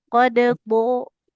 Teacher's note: Kalau dal kan dia bagian ujung lidah ya. Ya, Kalau ya, dhad bagian tepi lidah. Qad dho. Kemudian dhad kan tebal kalau dal tipis.